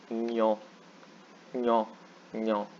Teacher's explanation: It's pronounced like ny, nyo, kind of like nyo, but it's not a dental N.